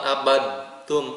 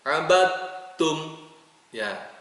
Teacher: Ma'abattum dalnya dihilangkan. Nah, yang dibacanya adalah ta, ada tasdidnya. Ya, abattum bukan abadtum, salah.